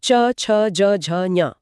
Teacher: जीभ ऊपर तालू को छूती है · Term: च वर्ग